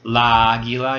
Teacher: you have this like long a like these two ah sounds together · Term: 2 ah sounds together